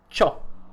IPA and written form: t͡ʃo (CIO)